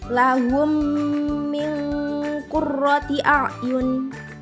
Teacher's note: Selanjutnya ada huruf nun sukun berwarna hijau bertemu dengan huruf qaf disebut hukum ikhfa, panjang dengungnya itu 2 harokat